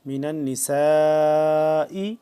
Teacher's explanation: سین الف مد زبر سا لمبا کریں گے اس کو 4 سے 5 الف کے برابر، بڑی مد ہے